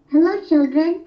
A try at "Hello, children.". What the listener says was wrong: Hello, panjang. Hello, kena panjang.